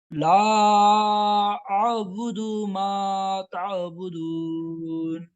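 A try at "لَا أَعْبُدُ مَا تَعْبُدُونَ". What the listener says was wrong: इतना जोर से आइन निकालते हैं कि हमजा को भी आइन मिला देते हैं।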